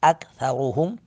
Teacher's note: تھا کو نرمی کے ساتھ بغیر سیٹی کے ادا کریں گے